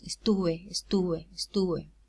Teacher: So, is it an occlusive or a fricative? Well, it's realized as a fricative. Because it occurs between vowels.